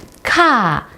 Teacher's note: The k sound, it gives a more airier, lighter sound.